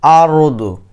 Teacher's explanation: সাকিনালা র এর ডান পাশে যখন জবর আসবে আমরা তখন মোটা করে বলবো